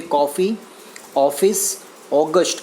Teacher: આ બોલતી વખતે તમે ઉચ્ચાર જે છે પહોળો બતાવશો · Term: પહોળા ઉચ્ચાર